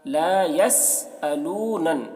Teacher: یہاں پر نون مشدد ہے، نون میں غنہ ہوگا